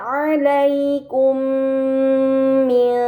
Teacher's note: Kemudian pada kata alaikum mim sukun bertemu dengan huruf mim, ini dinamakan idgham mimi, maka mim sukun dibaca secara melebur dengan gunnah yang dipanjangkan